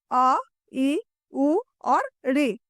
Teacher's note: ह्रस्व स्वर। इसके उच्चारण में बहुत कम समय लगता है। एक मात्रा का समय लगता है।